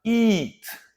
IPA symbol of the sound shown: i